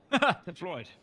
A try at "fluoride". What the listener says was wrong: Oh, you're just saying it very quickly when your accent makes it sound like you're saying Floyd. Fluoride. Fluoride. Fluoride. rawhide,